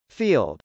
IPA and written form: fˈild (field)